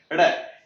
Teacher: यहां जीभ को एकदम झटके से मूर्धा को टच करवा के नीचे पटकना है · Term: उत्क्षिप्त व्यंजन